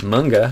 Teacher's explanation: In both of these cases the n gets pulled back by the following back consonant sound. So k or g or both with the back of the tongue.